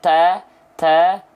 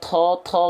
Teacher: huruf tho sifatnya adalah jahr jahar itu artinya tertahan nafas Jadi dilafalkan enggak boleh keluar th th tapi th th jadi · kalau huruf ta dia keluar nafas sedikit ta ta tapi kalau tho enggak boleh tho tho Enggak boleh